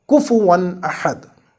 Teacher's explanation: But still we do idhar here, like kufuwan ahad. No elongation of noon in this tanween. Just the natural gunnah that is present in noon.